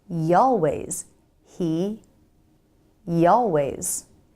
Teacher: The Y is a glide consonant, so we can use it to smoothly glide between words.